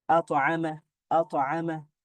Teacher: যদি শব্দের মাঝখানে থাকে তাহলে এটা খুবই খুবই সহজভাবে কলকলাটা হয়, এবং খুবই দুর্বল কলকলা হয়